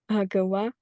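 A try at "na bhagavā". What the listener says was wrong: Bhagava. Just lengthen this A. Bhagava, long A. Na Bhagava.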